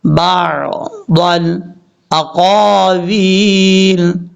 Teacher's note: با کو جب عین کے ساتھ کنیکٹ کریں گے تو عین نارمل طریقے سے پڑھا جاتا ہے، اس کو سختی سے نہیں پڑھنا